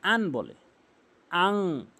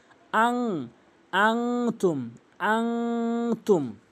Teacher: নাকের ভিতর নিয়ে গুন্না করতে হবে